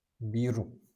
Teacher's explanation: the Japanese r is not like the American r you don't roll your tongue back